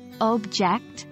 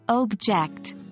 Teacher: the first one with stress on the first syllable object is a noun but when we shift the stress to the second syllable object it becomes a verb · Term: stress shift